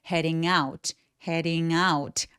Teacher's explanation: head out은 구동사라서 구동사들은 두 번째 단어가 의미를 결정하거든요. 그래서 두 번째 단어에 살짝 더 강세를 줘서 heading out, heading out 라고 out에 살짝 더 강세 주세요